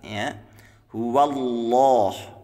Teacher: cara membaca lafadz Allah tafkhim ya tebal itu diucapkan dengan meratakan ujung lidah ke langit-langit